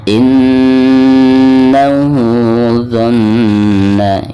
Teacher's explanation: Innahu dhanna, ini juga sama dihukumi gunah ya, karena nun yang bertasydid. Jadi selain ditekankan harus ada gunahnya ya, 2 atau 3 harokat.